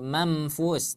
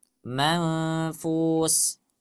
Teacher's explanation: Suaranya samar. Ghunnah cuman dia samar, tidak jelas itu huruf apa.